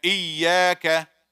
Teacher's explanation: jim, sheen, and ya from wasat al-lisan, the middle of the tongue